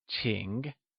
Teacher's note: Ching is pronounced with the falling rising tone